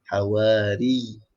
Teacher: Tak boleh hawari, ri, tak masuk ya. Kena masuk ya dan tahan pada huruf ya sebab ada sabdu. Hawari. Kemudian panjangkan dua harakat. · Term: mat tamkin